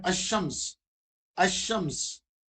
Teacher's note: ال کے درمیان میں لام نہیں پڑھا جا رہا